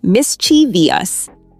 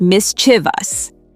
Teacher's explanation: A lot of people add an extra syllable and say mischievous, but it's actually just mischievous. Right, only 3 syllables, not 4.